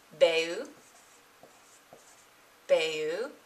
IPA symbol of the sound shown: beu